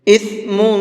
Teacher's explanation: اثم، میم کے اوپر تنوین ہے تو اس تنوین کے اندر اخفا کر کے پڑھیں گے، یعنی کہ ناک میں تھوڑا سا آواز کو چھپا کر کے پڑھیں گے